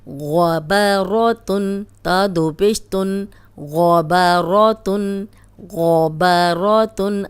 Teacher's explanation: غین موٹا ہے، با موٹا نہیں ہے. را پہ زبر را موٹی پڑی جائے گی. آپ نے با کو موٹا نہیں کرنا.